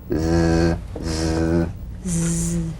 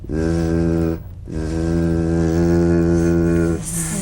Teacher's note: The Z vibrates in that very small open space between the tongue and the upper teeth. Right in here.